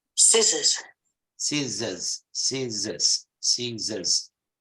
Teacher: the O becomes a schwa the short sound